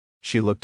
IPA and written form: ʃi lʊkt (She looked)